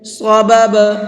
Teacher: صبب دوسرا با ساکن ہے اور با ساکن ہوتا ہے تو اس کے اندر قلقلہ کر کے پڑھتے ہیں، یعنی ہلکا سا آواز کو ڈبل کر کے پڑھتے ہیں۔